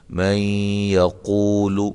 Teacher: نون ساکن کے بعد یا آ رہی ہے تو یہاں ادغام مع الغنہ ہوگا